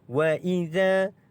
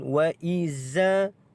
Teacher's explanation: Za ini dibaca dengan kita keluarkan sedikit hujung lidah, sama seperti kita menyebut huruf sa. Wa idza, bukan wa izza.